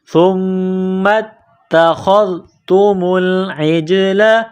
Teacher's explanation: سا کو پڑھتے وقت زبان باہر نکالیں گے، سا کو نرم کریں گے · میم کو تا کے ساتھ ملانا ہے، تا کے اوپر تشدید ہے، تا کو دبانا ہے